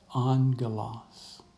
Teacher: The accent mark tells us that this syllable, the first syllable, is the one that will receive the stress when we pronounce it